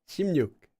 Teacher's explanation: 16 or any version of 10 and six becomes pronounced as shim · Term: sound change rule